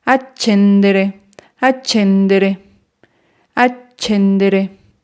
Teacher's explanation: la sílaba que alargaremos será che